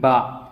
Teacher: اب جب ہم ان کو ادا کریں گے، با جب ہم پڑھتے ہیں با، تو جو ہمارے ہونٹ ہیں ان کا جو تر حصہ ہے وہ اس سے با ادا ہو رہا ہے، ہمارے دونوں ہونٹ جو لگتے ہیں وہ تر حصے کے اوپر لگ رہے ہیں